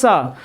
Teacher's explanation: तालु से बोला जाने वाला जो वर्ण होता है, हमने बताया था जो सा बोलते हैं, जीभ तालु में टच करें और हवा बाहर करें वो बोलता है सा, जिसको सीटी वाली सा बोलते हैं।